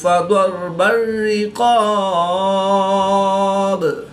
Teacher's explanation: كذلك يضرب الله للناس امثالهم فإذا لقيتم الذين كفروا فضرب الرقاب۔ قاف حروف مستعلیہ میں سے ہے، تو اس کو پر یعنی موٹا پڑھیں گے · ضاد حروف مستعلیہ میں سے ہے، تو اس کو پر یعنی موٹا پڑھیں گے۔ را ساکن سے پہلے ضاد پر زبر ہے، تو را کو پر یعنی موٹا پڑھیں گے